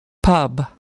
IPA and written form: pʌb (pub)